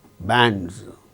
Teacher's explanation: After A, we find N, D and Z, bands, because D is a voiced sound and the plural marker is pronounced as Z, bands. Likewise, there are 3 sounds after the vowel sound in this particular word.